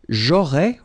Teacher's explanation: final S not pronounced